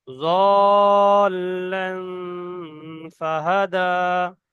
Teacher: তো এখানে জি জোয়াদের উপরে মধ্যে লাজিম আছে। কেন? হরফে মাদের পরে তাসদিদ এসছে, তাই তো। তো জি এখানে জি টান হবে পাঁচ আলিফ, জল্লান।